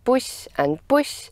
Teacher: the word initial stop consonants are always short and voiceless